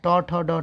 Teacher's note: टवर्ग जितना है ट ठ ड ढ सब मूर्धा से बोलते हैं।